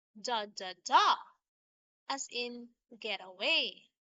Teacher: It is kind of like iamb, but this time we have three syllables. It has unstressed, unstressed, stressed syllables. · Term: anapest